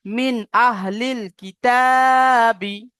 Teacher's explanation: নুন সাকিনের পরে হামজা এসেছে, ইজহার, ইজহার। বিনা গুণায় জাহির করে পড়তে হবে।